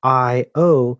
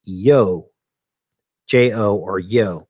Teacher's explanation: the interjection io is pronounced either with two syllables i o or a single syllable